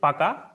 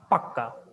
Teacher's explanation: দ্বিত্ব ব্যঞ্জন মানে ব্যঞ্জন দুইবার হয়ে যাওয়া, ব্যঞ্জনের পরিবর্তন নয়, একই ব্যঞ্জন ক দুবার হলো, ক দুবার হলো, নতুন কোনো ব্যঞ্জন আসবে না।